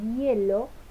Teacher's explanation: Ese es el sonido I en hielo, que es un sonido palatal